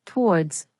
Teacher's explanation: In natural British English, we usually pronounce towards with one syllable, towards one syllable.